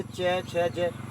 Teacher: जब हम बोलते चे छे जे, तो हमारी जीभ गोलाकार होकर तालवे से टकराती है, तो वो होगी हमारे पास तालव्य व्यंजन, चे छे जे जे।